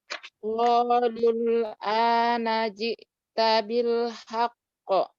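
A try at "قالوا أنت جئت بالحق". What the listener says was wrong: Nah, gitu ya.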